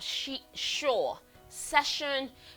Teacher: Voiceless fricative made by putting the tip of your tongue a little bit past the alveolar ridge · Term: sh sound